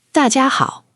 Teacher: 大, fourth tone, drop. 家, first tone, flat.